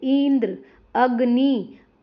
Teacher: ई और अ पर ज्यादा जोर दिया जाता है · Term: बलाघात